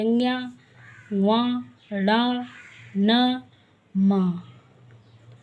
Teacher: ये नाक से बोले जाते हैं, इसलिए इनको नासिक के व्यंजन कहते हैं।